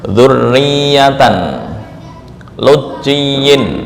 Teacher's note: membaca idgham tanpa ada tambahan dengung dan pengurangan ukurannya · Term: Idgham Kamil